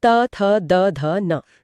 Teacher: यहां जीभ दांतों को स्पर्श करती है